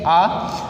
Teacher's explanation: आ हमारा जो है जीभ के पीछे वाले भाग से बोला जा रहा है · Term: पश्च स्वर